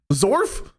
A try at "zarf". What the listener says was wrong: If you pronounce the A weird, it's a zarf or a zorf if you're a yinzer.